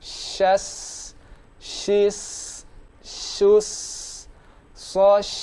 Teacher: Syas, tengah lidah naik, lalu ucapkan sin yang posisi lidah normal atau lidah sejajar dengan gigi seri bawah